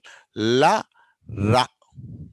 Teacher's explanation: ఇక్కడ గాలి పూర్తిగా ఎక్కడ ఆగదు అన్నట్టు, బట్ నాలుక మాత్రము టచ్ అవుతుంది, లైట్గా టచ్ అవుతుంది, అందుకే వీటిని లిక్విడ్స్ అంటాం.